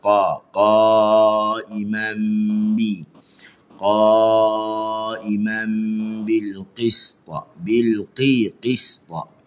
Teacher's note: Pangkal lidah naik hujung lidah tebah.